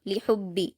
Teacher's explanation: ہا کو حلق سے ادا کرتے ہوئے جلد پڑھیں گے، با پر تشدید ہے تو ہا کو با سے ملائیں گے اور با کو سختی سے جلد پڑھیں گے